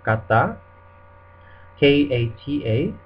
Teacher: We don't say kata, but we say kata. So there's not like an aspiration after the k. You don't say k, but you say k.